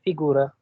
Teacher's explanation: ई पे नहीं है, ऊ पे स्ट्रेस है